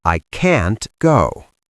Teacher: in American English, we often don't release the T at the end. We just stop the air.